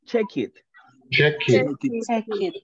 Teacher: Estamos uniendo las dos palabras y le estamos dando continuidad al sonido para alargarlo y unirlo con el siguiente, right? No hacemos pausa, no decimos check it, right?